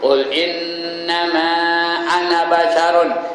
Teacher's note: Ini ana tu tak ada panjang, ya.